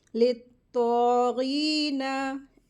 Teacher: नून को लंबा नहीं करेंगे, ज़बर लगी है, इसको जल्दी पढ़ेंगे, ले तो गीना, ऐसे।